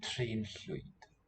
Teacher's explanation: Note that the ll, voiceless L, gives us the FL cluster when we render as Floyd.